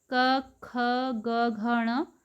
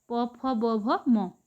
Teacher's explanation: पहला और दूसरा अघोष ध्वनि होते हैं, तीसरा, चौथा, पांचवा सघोष होते हैं।